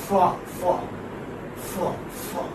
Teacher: In a labiodental consonant, the lower lip comes close and touches the upper teeth.